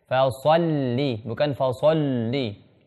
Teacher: Falsalli, bukan falsalli. Ketika masuk huruf lam, bibirnya tarik lagi, tipiskan.